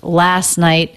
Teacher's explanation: we have a stop t at the end of night that's because the next word begins with the consonant and the